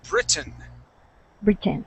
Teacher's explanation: that accent goes at the very beginning